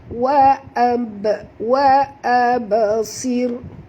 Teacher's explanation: Wa ab. Okay, ba bila dia mati di tengah-tengah kalimah, lantunkan dia